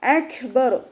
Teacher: ഇനി കാഫിന് സുക്കൂനാവുന്ന സമയത്ത് കുറച്ച് എയർ പാസ് ചെയ്യുന്ന സൗണ്ട് കൊടുത്തിട്ട് വേണം ഉച്ചരിക്കാനായിട്ട്.